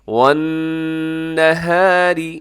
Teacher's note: نون مشدد ہے، یہاں پہ غنہ کیجیے گا، اور آگے جو را ہے اسے باریک رکھیے گا، را کے نیچے زیر ہے۔